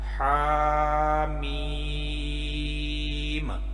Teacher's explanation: تو دونوں کو اگر ملا کے پڑھیں تو کچھ اس طرح سے ادا ہوگا، حامیم۔ میم کو تھوڑا زیادہ لمبا کریں گے اور ہا کو جو ہے تھوڑا سا میم سے کم لمبا کریں گے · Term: مد